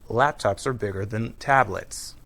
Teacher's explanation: when we use are in a sentence, it's usually unstressed and pronounced Laptops are bigger than tablets.